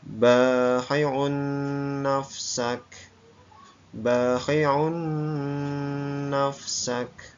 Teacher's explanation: suara tanwinnya hilang masuk ke dalam huruf nun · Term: idgham diguna